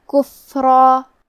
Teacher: کلمت کفرا میں فا پہ جزم ہے، لہذا ہمیں فا کو ہمز سے پڑھنا ہے